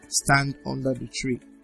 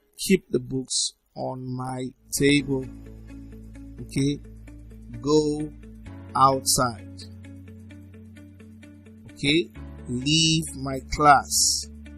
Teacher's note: These are commands. Okay, and they usually are in the falling tone.